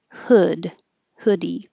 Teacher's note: don't round your lips hood and the tongue is a little lower